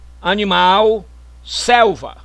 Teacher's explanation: a vocalização da consoante l em final de sílaba